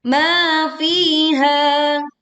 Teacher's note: ketiga huruf ini ma fiha dibaca masing-masing 2 harokat